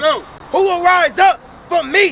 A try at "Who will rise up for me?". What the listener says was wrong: Read it again. Stress that first word.